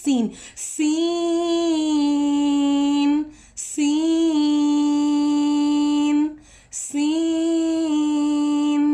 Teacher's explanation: सीन को जो हमने पढ़ा तो हमने स्माइल करके पढ़ना है। सीन, सीन में थोड़ी सी सीटी की आवाज़ है